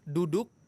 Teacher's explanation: kalau huruf dal, ujung lidah ketemu dengan pangkal gigi seri atas. Duduk, tapi kalau orang Arab ngomong jadi duduk, lebih lunak.